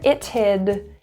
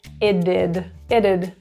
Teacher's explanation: It had turns to it'd. The T surrounded by 2 vowels turns to a flap T, which sounds like a D. So instead of it hid, it did, it'd.